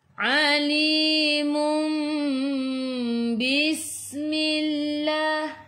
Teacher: dengung, rapatkan bibir tapi jangan tekan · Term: iqlab